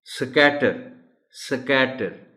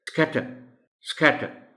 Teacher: سو ان کو سمجھایا بھی جائے گا، ان کو پریکٹس بھی کرائی جائے گی کہ ایس سی کو بالکل ملا کر تیزی کے ساتھ نکلنے والی ساؤنڈ پیدا کی جائے گی